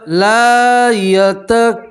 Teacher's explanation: لام کے ساتھ الف مدہ ہے, اس طرح ایک الف کے برابر کھینچیں گے. الف مدہ کسے کہتے ہیں کہ الف ہو اور اس سے پہلے والے حرف کے اوپر زبر ہو تو اسے الف مدہ کہتے ہیں.